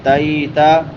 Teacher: آتیتا، آ کے اوپر کھڑی زبر ہے. تیتا، تا کے بعد یائے لین ہے، یا ساکن ما قبل فتحہ ہے، زبر ہے، یا لین کی نشانی ہے.